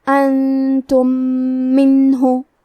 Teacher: آخری میں میم ساکن ہے، پھر حرف المیم ہے کلمت منہ، یہاں بھی حکم ہے ادغام متماثلین صغیر، ہم پہلے میم کو دوسرے میم میں ملا کے ایک ہی میم غنہ اور تشدید کے ساتھ پڑھیں گے۔